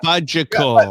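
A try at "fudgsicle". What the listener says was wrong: No, it's an S. Fudge-sickle. fudge-sickle.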